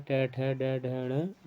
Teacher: तालु में जो आते हैं। मूर्धा और जीभ के स्पर्श वाले वर्ण जो है मूर्धन्य कहलाते हैं। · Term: मूलधन्य